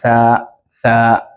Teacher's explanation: the tip of your tongue touches the lower edges of your upper teeth. Tha, as if it wants to come out.